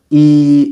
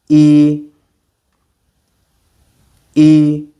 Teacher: even though it sounds like double E in English, it is actually shorter and we could say tighter. It's not the e, it's more e e Very good.